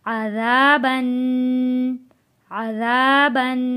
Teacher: ذال کا بہت خیال رکھنا ہے، ذال کو پڑھتے ہوئے زال نہیں کہنا، ذال نرمی کے ساتھ ادا کرنا ہے